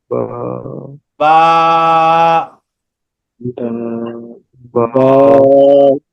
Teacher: আমাদের ঠোঁটের যে পেটটা আছে বা ঠোঁটের যে ভিজা অংশটা আছে দুই ঠোঁটের ভিজা অংশ মিলিয়ে বা টা উচ্চারণ করতে হবে